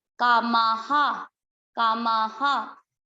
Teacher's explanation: कामा, और माँ के बाद है विसर्ग, ये चीज, विसर्ग का उच्चारण होगा इसकी मात्रा पे। माँ किसकी मात्रा है, आ की, तो विसर्ग को पढ़ेंगे हा, कोई विसर्ग ना छोड़े, कामाहा, कामाहा।